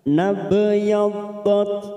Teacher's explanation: ada huruf ba sukun qalqala sugroh karena mati di tengah kalimat kita pantulkan